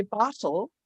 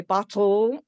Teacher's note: So if I say bottle, we kind of pronounce it as bottle, and you don't have a vowel sound in the second syllable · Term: syllabic consonant